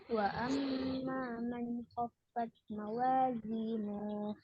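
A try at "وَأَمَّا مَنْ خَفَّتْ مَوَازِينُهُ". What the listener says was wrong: Nuhnya pendek.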